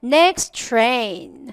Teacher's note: 앞에서 끝난 자음이 T고 뒤에서 시작하는 자음이 T라면 이럴 때는 두 번 다 소리를 내지 않아요. 한 번만 소리를 내거든요.